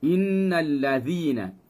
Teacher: zi kita ambil di hujung lidah, sentuh dengan tajamnya gigi tu.